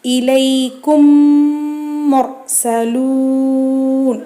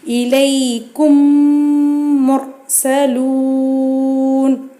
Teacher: சுக்குன் பெற்ற மீமிற்கு பின்னால் இன்னொரு மீம் வருமையானால் 2 மீம்களையும் ஒன்றாக சேர்த்து குன்னா செய்து உச்சரிக்க வேண்டும் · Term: இதுகாம் ஷஃபவி